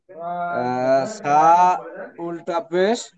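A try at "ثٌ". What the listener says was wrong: এটা, এটা উল্টা পেশ না, এটা দুটো পেশ, সা দু পেশ।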